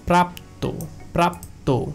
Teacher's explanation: সেই শব্দের শেষের স্বরে অটা ওকার রূপে উচ্চারিত হবে, অর্থাৎ এর উচ্চারণটা হবে প্রাপ্ত, প্রাপ্ত।